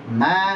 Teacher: Dua bibir nempel dan disertai dengan gunnah yang keluar dari al-khusyum. Berarti huruf mim juga ada bagian dua bibir dan ada bagian al-khusyumnya.